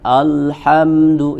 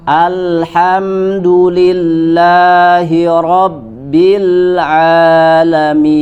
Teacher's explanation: kita berhati-hati agar tidak menebalkan huruf a. Jadi jangan alhamdu, ya, tipis suaranya.